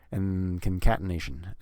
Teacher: we're actually just going to skip that D because we it's rare to say the D in the word and so in concatenation so we just have an n Sound basically